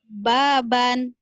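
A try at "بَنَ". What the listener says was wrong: Kenapa panjang bannya? Baban. Baban. Gak ada yang panjang ya.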